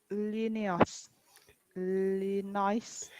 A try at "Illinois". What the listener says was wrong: Illinois, not S sound. Illinois. Yes, no S sound.